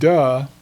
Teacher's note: a vocal schwa, which is pronounced as a very short uh sound